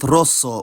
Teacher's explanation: where the S is geminated and therefore still voiceless